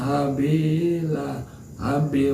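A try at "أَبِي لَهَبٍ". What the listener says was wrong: Itu alif abi apa habi itu? Alif bunyinya a bukan h. abi ya.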